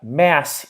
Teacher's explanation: When we have mass here, it ends with the fortis s.